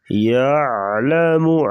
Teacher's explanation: عین کی آواز نکالیں گے گلے سے